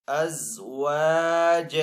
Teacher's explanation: اگر یہاں پہ وقف کریں گے تو دو زبر کو ایک الف سے بدل کر پڑھیں گے